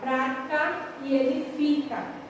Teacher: Então, aqui eu tenho uma proparoxítona. Eu localizei a sílaba tônica, que é pra, e aqui a sílaba tônica é fi.